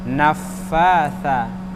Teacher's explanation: Naffa hurufnya tha bukan sin ya. Hurufnya tha ujung lidah dengan ujung gigi siri atas.